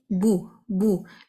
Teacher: جب میں نے بو کہا زبان فلیٹ ہوگی، ہونٹ راؤنڈ ہوں گے کیونکہ دمہ ہے، زبان فلیٹ ہوگی.